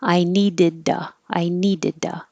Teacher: the t changes to a d the u changes to ah